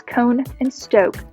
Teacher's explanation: the o phoneme is also moving frontward which allows cone and stoke to resemble cane and steak